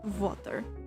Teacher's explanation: Whereas, with a Russian accent, it's a little bit more difficult because, like, water, they say water. Like, the A is very soft, and the W for water is like V, so it's VH, so it's like water.